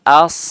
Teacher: suara yang tajam itu muncul karena melewati tempat mengalir yang sempit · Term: saofir